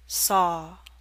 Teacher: your mouth is more open for the awe in saw